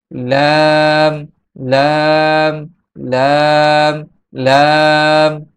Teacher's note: লাম হরফটির মাখরাজ হচ্ছে জিহ্বার আগার কিনারা সামনের উপরের দাঁতের মাড়ির সঙ্গে লাগিয়ে লাম উচ্চারিত হয়। যখন জিহ্বার আগার কিনারা যখন সামনের যে দুইটা দাঁত আছে এই দুইটা দাঁতের মাড়ির সঙ্গে লাগবে তখন লাম উচ্চারিত হবে।